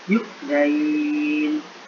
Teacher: Dibaca 6 harokat karena posisinya jatuh sebelum huruf yang diwakafkan. Yu'zain agak panjang, sekitar 6 harokat.